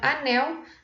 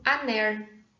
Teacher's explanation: Então, aqui na palavra anel, nós vamos ter uma produção aner, né? Nós vamos ter essa produção com uma produção desse rótico retroflexo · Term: rotacismo